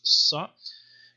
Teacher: So Sod, modern standard Arabic, no problem, just a pharyngealized S